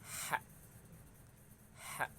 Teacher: tenggorokan bagian tengah, yaitu keluar dari tenggorokan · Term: huruf ha